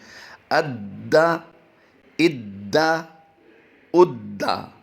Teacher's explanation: دال مشدد ہے، دال حروف قلقلہ سے ہوتا ہے، اور اس کی ادائیگی ہم جماؤں کے ساتھ کرنے کی کوشش کرتے ہیں